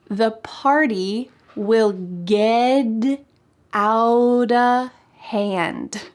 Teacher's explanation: But this phrase, get out of hand, uses an important American English pronunciation tip, which is that the T at the end of words, another T tip, that has a vowel next often changes to a D sound